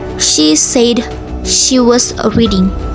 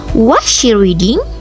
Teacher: the falling intonation on reading signals a complete ongoing action. In contrast, a rising pitch in a question like, "Was she reading?" suggests uncertainty.